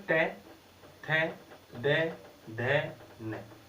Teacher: हमारी जो जीभ है वो कहां स्पर्श होती है? ऊपर वाले दांतों को टच करती है। तो इसलिए दांत इनका उच्चारण स्थान होने के कारण इन वर्णों को कहते हैं दंत्य वर्ण।